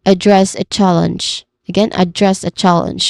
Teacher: address a challenge with emphasis on dress and chal